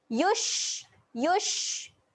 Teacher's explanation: huruf shin ketika mati sifatnya kena keluar. Keluarkan angin.